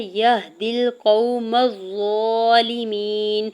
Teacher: ضا کے اوپر کھڑی زبر 2 حرکت کھینچ کے ادا کریں گے · یا کے زبر کو ہا ساکن کے ساتھ ملاتے ہوئے پڑھیں گے. دال کی زیر کو لام ساکن کے ساتھ ملائیں گے.